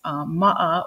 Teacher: There's a okina there, and so in English we would say a glottal stop. So it looks like an apostrophe, but it goes the other way.